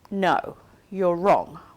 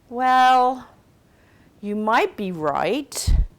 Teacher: use a rising tone to disagree in American or British English because it's less combative than using a falling tone